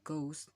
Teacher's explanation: Some Indian English speakers supply a murmured version G, for example, ghost.